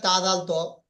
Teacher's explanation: জিহ্বার আগা এবং সামনে উপরে দুই দাঁতের গড়ার সাথে লাগিয়ে উচ্চারিত হয়